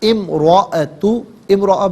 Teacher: امرأ میں آپ دیکھیں را پر زبر ہے، را پر زبر یا پیش ہو تو را کو پر پڑھتے ہیں، زیر ہو تو باریک پڑھتے ہیں.